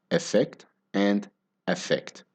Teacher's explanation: In both words, the stress is on the second syllable. So the unstressed syllable at the start of each word, it sounds pretty similar, even though they are different vowel letters.